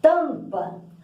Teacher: o M está servindo para nasalar a vogal A. Tampa, tanto que a gente vai ter 5 letras e 4 fonemas, porque o M só vai transcrever, né, fazer o tiozinho no A. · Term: dígrafo vocálico